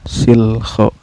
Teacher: lam sukunnya dibaca secara jelas ya, nggak boleh memantul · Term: alif lam komariah